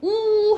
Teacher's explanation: 여러분 우 해봐. 우 하면은 우 하면 입술 모양이 동그라미가 돼요